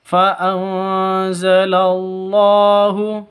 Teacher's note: nun mati bertemu dengan za, bertemu dengan zain, samar disertai dengung, siap-siap ke huruf za-nya karena ikhfa hakiki.